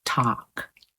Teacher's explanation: AL with a silent L is often ah, like in talk